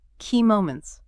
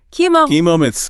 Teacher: Let's isolate the plural S at the end, which often gets swallowed by learners. Make sure it really rings out.